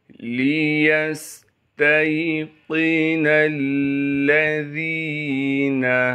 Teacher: وَمَا جَعَلْنَا عِدَّتَهُمْ إِلَّا فِتْنَةً لِلَّذِينَ كَفَرُوا لِيَسْتَيْقِنَ الَّذِينَ، لام کو بغیر کھینچے پڑھیں گے، یا کو سین ساکن سے ملا دیں گے کیونکہ سین ساکن ہے، سین میں سیٹی ادا کریں گے۔ تا کو آگے یا ساکن سے ملانا ہے، قاف کو موٹا کر کے پڑھیں گے، نون کو آگے لام سے ملا دیں گے کیونکہ لام پر تشدید ہے، تشدید ہونے کی وجہ سے تھوڑا سا ٹھہراؤ رکھیں گے۔ · تا کو آگے یا ساکن سے ملانا ہے، قاف کو موٹا کر کے پڑھیں گے، نون کو آگے لام سے ملا دیں گے کیونکہ لام پر تشدید ہے، تشدید ہونے کی وجہ سے تھوڑا سا ٹھہراؤ رکھیں گے۔ ذال کو باریک کر کے پڑھیں گے اور ذال کو آگے یا مدہ سے ملا دیں گے